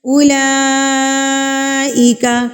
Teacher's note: یہ جو مد ہے اس کو کہتے ہیں بڑی مد، مد متصل، یعنی کہ اس کو آپ نے 4 حرکات کے برابر کھینچ کے پڑھنا ہے